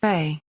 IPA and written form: ˈbe (ve)